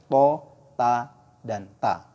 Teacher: Makhraj huruf to, da, dan ta keluar dari ujung lidah dari arah punggungnya. Dari arah punggungnya sama. Dan menempel pada pangkal dua gigi seri atas.